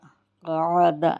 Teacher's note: عین کو بیچ حلق سے نکالیں گے